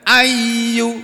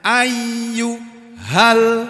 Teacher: ya-nya ada 2. Ayyu harus kedengaran dua-duanya. Ayyu hal, nah, ini asalnya ha gitu panjang, tapi karena diikuti dengan alif lam, bacaan panjangnya jadi hilang karena melebur masuk ke dalam kalimat al ini.